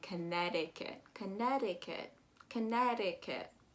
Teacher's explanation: you're going to omit that uh second c · again that t turns into a d